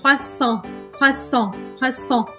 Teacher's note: O R é aquele R arranhado do francês.